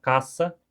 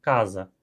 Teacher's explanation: os falantes de espanhol usam a forma desvozeada para se referir a esse fonema. É mais comum falar caça e não casa.